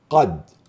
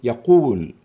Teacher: تفخيم القاف المفتوحة في قد أكثر تفخيما من يقول